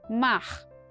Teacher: Outra forma, retroflexa, ainda mais posterior.